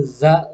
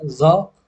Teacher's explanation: Bedanya antara za dan zo itu huruf zo dibaca tebal, yaitu ketika lidahnya tuh naik ke langit-langit. Jadi za, zo itu zo-nya tebal, salah satu sifatnya.